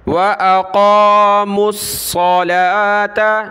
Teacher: میم کو صاد کے ساتھ ملائیں گے، واو کو نہیں پڑھنا، اور یہ صلاۃ ہے، زکوٰۃ ہے، ٹھیک ہے، صلوات اور زکوٰۃ نہیں پڑھتے۔